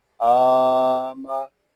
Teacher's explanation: حمزہ کے اوپر کھڑا زبر ہے، اس کو ہم ایک الف تک کھینچ کر پڑھیں گے